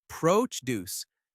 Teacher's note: Produce noun. Stress the first syllable.